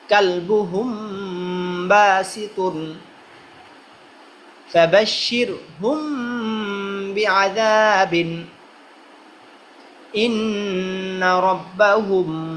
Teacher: মিম সাকিনের পরে বা আসলে যে গুণনা করে পড়তে হয়